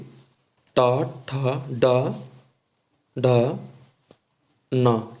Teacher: ये हमारे मूर्धन्य वर्ण है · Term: मूर्धन्य व्यंजन